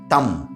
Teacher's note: दंत से उच्चारण होता है